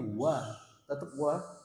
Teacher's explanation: Hati-hati mengucapkan huruf waw ini, jangan langsung wo, tapi wa, tetap wa.